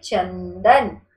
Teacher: जब आपने चंदन बोला तो ये जो न की बिंदी है ये इसकी वायु आपकी नाक से निकली है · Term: अनुस्वार